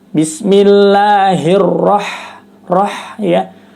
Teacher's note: mah nggak jelas itu apakah hak kecil atau ha besar Padahal ketika membaca huruf H sukun pada lafal ar-rahman itu seperti keluar udara dari mulut